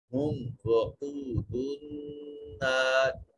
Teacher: میم ساکن کے بعد نہ با ہے نہ میم ہے، اظہار شفوی ہوگا